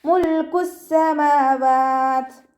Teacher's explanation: സീനിന് ശ്രദ്ധ വന്നിട്ടുണ്ട്. 2 അക്ഷരങ്ങൾ ഉച്ചരിക്കുന്ന കനം കൊടുക്കുക.